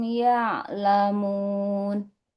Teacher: Jangan y'lamun. Huruf ain di tengah tenggorokan ya.